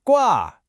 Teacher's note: high flat first tone